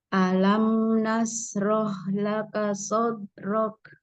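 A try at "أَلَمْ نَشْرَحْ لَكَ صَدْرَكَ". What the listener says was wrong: Coba shin-nya lebih tebal. Nashroh.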